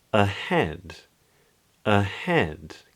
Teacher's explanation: in a word like ahead, head is the stressed syllable, and the A at the beginning is unstressed